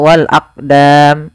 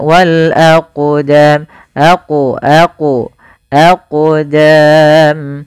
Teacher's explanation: huruf qalqalah, maka cara membacanya yaitu kita memantulkan huruf qafnya